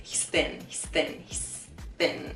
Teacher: We're not exaggerating the th sound so much there. It's like the th sound happens, but the tongue doesn't come out between our teeth.